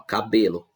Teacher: em cabelo é a penúltima sílaba mais forte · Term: paroxítona